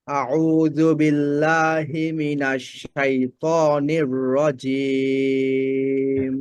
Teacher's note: আউযু বিল্লাহি মিনাশ শাইতানির, এই রটা আরেকটু ভারী করবেন।